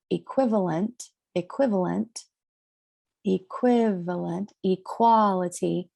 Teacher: the stress gets moved to the second syllable in those words.